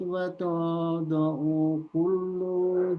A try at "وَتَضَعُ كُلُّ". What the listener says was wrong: Diulang dari watada'u kullu. Lunya pendek.